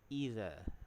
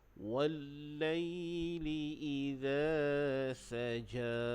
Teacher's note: huruf zal makhrajnya di hujung lidah, kita letakkan antara gigi atas dan bawah. Iza, bukan iza.